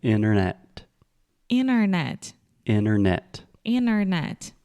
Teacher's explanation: we do not say the first T. We do not say internet.